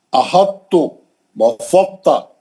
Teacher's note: تا کے اندر ادغام ہو گیا ہے لیکن تا کو تھوڑا موٹا کر دیں گے